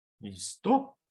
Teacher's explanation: For example, in the Spanish question, listo, meaning are you ready, the second syllable, to, will be heard as having a higher pitch than the first syllable, listo. When we hear as pitch, what we hear as pitch is produced by the vocal cords vibrating.